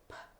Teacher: you feel the vocal cords B you can feel them vibrate when you say P the letter P and you touch your vocal quarts you can feel that it does not vibrate